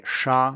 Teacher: to produce this sound, you retract your tongue a little bit and you raise it. The tongue tip should be slightly behind your teeth ridge, which is the little ridge you can feel with your tongue tip if you slide it backward from your teeth.